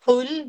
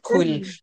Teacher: yang paling pangkal lidah kena langit-langit adalah Qaf. Kalau yang atas sikit kena langit-langit adalah kaf.